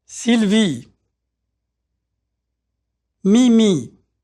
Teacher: Notice how tight the sound E is. There's no diphthong, which is to say that the vowel sound doesn't change.